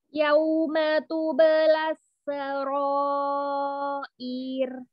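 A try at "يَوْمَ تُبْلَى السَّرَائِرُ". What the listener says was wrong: Ih, kenapa hamzahnya dipanjangkan kasrahnya? Sin, sinnya nih double nih, sin tasydid kan, double sinnya ada dua. Sukunkan dulu sin yang pertama, kasih sifatul huruf.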